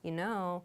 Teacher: if you hear it with that downward intonation you know it's probably sharing some new information